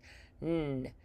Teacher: tongue tip goes up to that ridge, the alveolar ridge right behind those top front teeth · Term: nasal